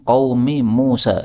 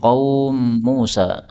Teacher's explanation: mim ketemu mim qaumi Musa. Ini boleh idgham menjadi qaum Musa. Ya. Meskipun sebelumnya ada wawu sukun, enggak apa-apa.